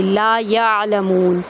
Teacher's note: لا یعلمون لام کو ہم ایک الف کے برابر لمبا کریں گے، یا کو عین کے اندر داخل کرتے ہوئے عین کی آواز وسط حلق سے ادا کریں گے